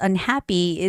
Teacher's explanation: The stress comes on the vowel a.